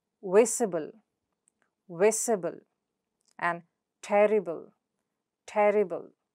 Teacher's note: The syllable right before the suffix. So that is vis and ter.